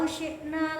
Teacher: na-nya itu panjang dibaca mad tabi'i